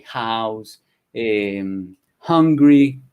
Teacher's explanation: house hungry hambriento tener hambre se pronuncian con una hache aspirada